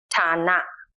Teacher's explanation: It is an aspirated T sound, like an English T in true or tense.